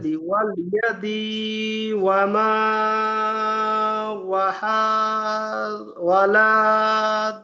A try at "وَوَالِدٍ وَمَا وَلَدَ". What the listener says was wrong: এখানে টান নেই, ভালো করে দেখেন।